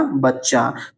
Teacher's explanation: ठीक है, अब इसका उदाहरण जैसे आप लोग देख सकते हैं, जैसे बच्चा, क्या हो जाएगा, बच्चा। तो देखिए चा का यहाँ पे क्या हुआ है, द्वित्व हुआ है, एक ही ध्वनि 2 बार आ चुकी है